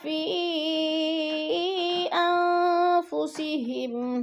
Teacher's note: فی پہ مد منفصل ہے، 4 الفی مد ہے، 4 الف کے برابر ہم نے اس کو لمبا کرنا ہے